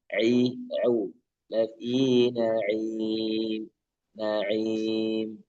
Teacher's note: maka kita coba untuk memisahkan ya di ain itu dari tenggorokan tengah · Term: huruf ain